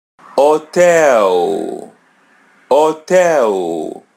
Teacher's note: Let the letter H come in the beginning. So, it's silent.